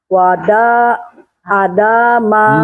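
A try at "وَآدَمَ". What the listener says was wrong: Yang panjangnya mana? Daknya panjang pendek, enggak, daknya panjang pendek. Nah, pendekin.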